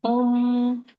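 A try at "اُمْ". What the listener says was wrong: लंबा क्यों लेके गई थी? नहीं लंबा था। अम, इम, उम, ठीक है। मीम साकिन के बाद सिर्फ दो ही सूरतों में आवाज गुन्ना में जाती है, ठीक है, पता है ना आपको।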